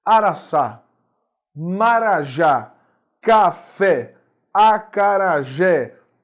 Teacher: A sílaba mais forte é a última, ou a sílaba tônica é a última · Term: oxítonas